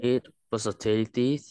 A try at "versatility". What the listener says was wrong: Không phải là tin nha. Tiếng Anh không có chữ tờ. Tiếng Anh phải có âm tờ. Em phải luôn bật hơi cho cô. T.